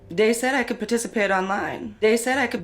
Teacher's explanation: a D sound for where you see a written th so dat for that you can hear that in this clip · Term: th stopping, TH stopping